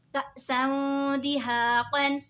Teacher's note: دو زبر کی تنوین کے بعد حروف اقفا کا دال آ رہا ہے تو اقفا ہوگا یعنی گنہ کر کے پڑھیں گے